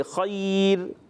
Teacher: زبان کو سیدھا رکھیں گے نا تو باریک رہے